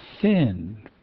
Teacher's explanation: You can hear th is voiceless, whereas the has a voice to it. So we add an extra H in Truespel to indicate that voicelessness.